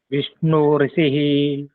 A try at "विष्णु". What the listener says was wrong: विष्णु नहीं, विष्णु। छोटी। छोटी है, विष्णु ऋषि। विष्णु नहीं, विष्णु। छोटी है। विष्णु कहो, विष्णु।